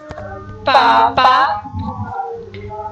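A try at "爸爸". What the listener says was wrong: First पापा नहीं पढ़ना, इसमें पापा नहीं पढ़ना, पापा पढ़ेंगे तो ये फर्स्ट टोन हो जाएगी, पापा पापा।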